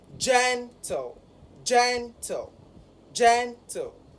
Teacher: gen, which is the first syllable of that word and has the primary stress of that word, should be higher in pitch